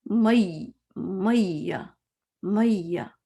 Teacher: یا پہ جب شدہ ہوتا ہے نا تو اس میں یہ پہلے یا کو نا تھوڑا زور سے بولتے ہیں